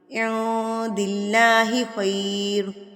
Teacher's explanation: نون ساکن یا تنوین کے بعد اگر حروف اکفا میں سے کوئی حرف آ جائے تو نون ساکن کو اکفا کیا جاتا ہے. نون ساکن کی آواز کو ناک میں چھپا لیا جاتا ہے